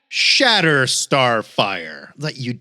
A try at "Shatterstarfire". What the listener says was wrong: No. You have to say it like it's clearly one word. Shatter Starfire. One word. Shatter Starfire. We're not sure what syllable you put the emphasis on.